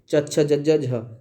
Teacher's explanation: च वर्ग के अंतर्गत जो 5 व्यंजन होते हैं, तो वो सारे के सारे स्पर्श संघर्षी व्यंजन के अंतर्गत ही आते हैं